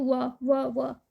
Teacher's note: व, तो ये दंतोष हो जाएगा। दांत से जीव और ओठों के कुछ योग से बोले जाने वाले वर्ण है दंतोष